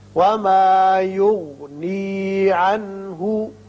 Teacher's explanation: عنہ میں نون ساکن کے بعد ہا ہے جو کہ حروف حلقی میں سے ہے، لہذا یہاں اظہار حلقی ہوگا.